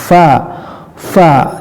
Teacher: huruf syafatain, ya, gigi seri atas bertemu dengan bibir bawah